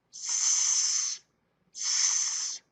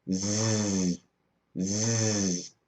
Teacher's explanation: S is unvoiced. They are the same, except when you make Z, your throat vibrates.